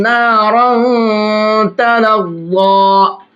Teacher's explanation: دیکھیے، یہاں پر تنوین کے بعد میں تا آ رہا ہے اور تا بھی اخفا کے حرفوں میں سے ہے، تو اس تنوین کو بھی ناک میں چھپائیں گے اور ضا کو موٹا کر کے پڑھیں گے اور ایک الف کی برابر کھینچ کر کے بھی پڑھیں گے۔